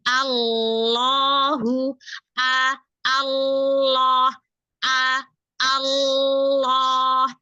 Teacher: Ketika masuk tasydid langsung tebal.